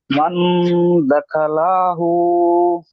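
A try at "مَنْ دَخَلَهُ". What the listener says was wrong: তো লা বলে একটু টান দিয়েছেন, লামটি টান হবে না। মান দাখালাহু।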